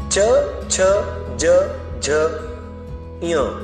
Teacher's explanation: उच्चारण करके आप खुद प्रयास करके देख सकते हैं। च छ ज झ ञ, इन पांचों को तालव्य तालु कहा जाता है क्योंकि इसका उच्चारण करते समय जीभ तालु महसूस करेगी